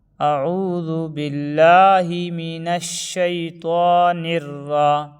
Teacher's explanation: حروف شمسی کے 14 حرفوں میں سے را آیا، اس لیے الف لام کو نہیں پڑھیں گے بلکہ بعد والے حرف سے ملا کر پڑھیں گے۔